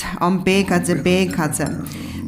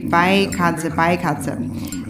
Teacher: So when you see this line, then the sound should be longer. And then there is also the double vowel sound of the A. So it's not just A, but it becomes an I, according to the Sanskrit.